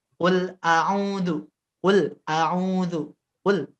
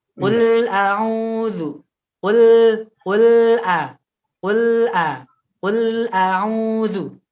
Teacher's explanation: Di lam sukun ada tawasud. Jadi sempurnakan ya. Jangan dipantulkan, jangan disyiddahkan. Ya, jangan direm.